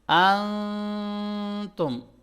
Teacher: ٹھیک ہے، اس کو اخفا کہتے ہیں کہ جب نون ساکن ہو اور اس کے فوراً بعد حروف اخفا میں سے، جیسے یہ شین ہے، یہاں پہ کوئی بھی لیٹر ہو سکتا ہے اخفا لیٹرز میں سے، تو ہم نے اس نون کو چھپا کے پڑھنا ہے، ہائڈ کر کے پڑھنا ہے